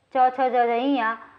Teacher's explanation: तालु और जीभ के स्पर्श से बोले जाने वाले वर्ण तालव्य कहलाते हैं